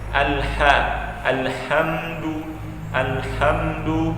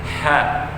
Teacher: Ha tipis ini cara pengucapannya ada kayak angin keluar sedikit